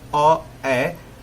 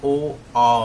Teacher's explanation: इसमें मुंह गोल नहीं बनेगा, लेकिन ओ, आ, है ना, ओ, आ, तो मुंह गोल बनेगा